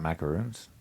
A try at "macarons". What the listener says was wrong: No. They are pronounced macrons or macarons. M-A-C-A-R-O-N-S. Macrons or macarons, not macaroons.